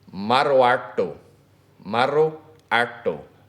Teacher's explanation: That's a rolled R in there.